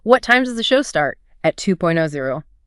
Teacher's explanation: Voice goes down on start, then up on 2.0. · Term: fall-rise tone